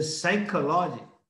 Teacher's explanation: You write psychology, but the P is silent. You say psychology.